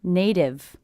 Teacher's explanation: I hear this T as a D because again it's a T coming between two vowel sounds · it's a T coming between 2 vowel sounds, will be a flap T, sounds like a D.